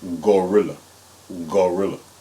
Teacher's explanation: if you notice when you say gorilla it's a little bit further back in your throat than when you say the word girl all right so we have G and and G the next